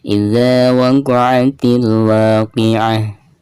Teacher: Tak marbutoh apabila diwakafkan maka berubah menjadi suara ha sukun dan ha tersebut adalah ha besar ya.